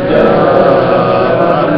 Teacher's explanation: جاء مد متصل، 2-3 الف کے برابر جائے گی، بڑی مد